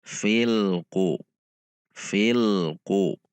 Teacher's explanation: Tidak terpisah antara lam sukun dengan qaf. Dengan tidak memanjangkannya. Selanjutnya qaf dhammah ku, 1 harokat.